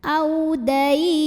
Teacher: Jadi jika berhenti ini boleh dipanjangkan 2, 4 atau 6 harokat asal konsisten dalam sekali bacaan. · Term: madlin